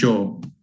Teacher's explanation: which is the post-alveolar affricate, voiced j, like in the word yo in Spanish